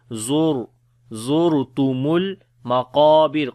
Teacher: جب را کے اوپر جزم اور اس سے پہلے پیش اور را موٹی پڑھی جاتی ہے